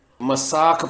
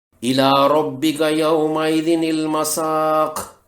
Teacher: مثلا الی ربک یومئذ المساق، اس میں قاف کے اوپر پیش ہے، وقف کرنے پر قاف کی پیش جزم میں بدل جائے گی، مساق پڑھیں گے، الی ربک یومئذ المساق۔ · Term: وقف بالاسکان